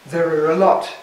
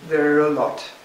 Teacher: the 're' at the end of 'there' becomes the beginning of the next syllable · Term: resyllabifies